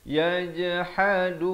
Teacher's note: Ha di pertengahan kerongkong